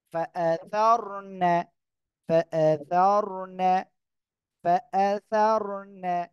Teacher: দেখেন, ফা জবর ফা, হামজা জবর আ, ফা আ, সা র জবর সার, র সেকেন্ড তার ডাইনে জবর মোটা আওয়াজে পড়তে হবে।